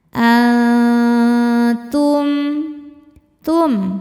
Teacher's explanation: Dengungnya sedikit karena ta makhrajnya masih dekat dengan nun. Jadi ujung lidah kita sudah siap-siap menuju makhraj huruf ta, yaitu mau disentuhkan ke pangkal gigi seri atas ya. Tapi belum menyentuh baru mau saja. · Karena nun sukun bertemu dengan huruf ta. Cara bacanya nun sukun ini bunyinya samar-samar. Siap-siap ke ta disertai dengung. Dengungnya sedikit karena ta makhrajnya masih dekat dengan nun. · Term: ikhfa hakiki aqrab